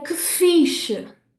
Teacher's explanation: I'm only stressing fiche and que gets a little bit swallowed, okay? I'm not saying que fiche. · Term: stress-timed language